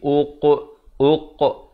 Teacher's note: kena berikan pantulan kerana qaf merupakan huruf qalqalah, bertanda mati, qalqalah surah